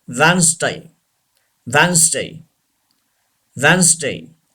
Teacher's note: D should be silent.